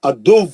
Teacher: पकड़ के सख्ती से रोकेंगे उसको वाऊ को वाऊ पे शिद्दत करेंगे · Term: तजदीद